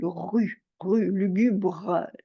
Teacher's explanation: Alors c'est la même chose, le R de rue, c'est un R qui racle, rue, rue, lugubre. Le R aussi de lugubre racle aussi, au fond de la gorge.